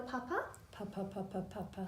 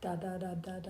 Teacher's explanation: I don't see any air coming out of the nose, and it shouldn't be on the sounds, so that's great.